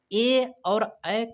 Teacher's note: ए के उच्चारण स्थान का नाम कंठ तालव्य होता है, अर्थात ए और ए का उच्चारण स्थान कंठ तालव्य से होता है।